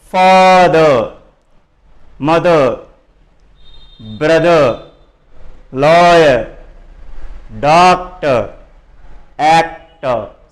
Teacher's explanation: చివరి ఆర్ వస్తుంది అంటే రాయడం ఆర్ రాస్తాము, కానీ ఆర్ని పలకము. · Disyllabic words with silent R have the stress on the first syllable. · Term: ఆర్ సైలెంట్